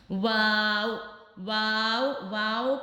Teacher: واو ہونٹوں کو گول کرنے سے ادا ہوگا۔